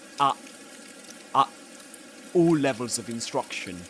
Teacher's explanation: And in that case you get glottal reinforcement because at the beginning he begins with a glottal stop